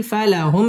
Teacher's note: মিম সাকিন ইজহারে খাস গুন্না ছাড়া পড়তে হবে